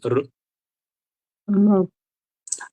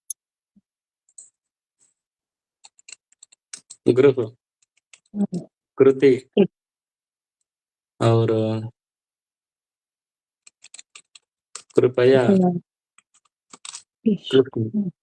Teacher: ऋ के उच्चारण में मूर्धा जो है वहां पे जीभ ले जाएं, पीछे की तरफ हल्का सा फोल्ड कर दें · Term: ऋकार